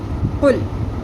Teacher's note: یہاں پہ قل نہیں پڑھنا، لام پہ قلقلہ نہیں کرنا